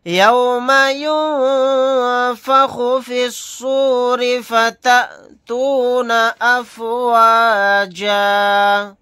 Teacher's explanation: حمزہ ساکنہ یہاں پر جھٹکا لگا کر پڑھیں گے حمزہ ساکنہ کے اوپر۔ حالت وقف میں جیم الف کے ساتھ ایک زبر کو پڑھیں گے۔